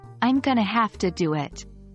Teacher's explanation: notice how going to became gonna and have to became hafta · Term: connected speech